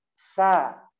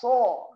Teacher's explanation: Nah, jadi sa turun kan? Kalau so suaranya naik. Sa. Sa, turunin.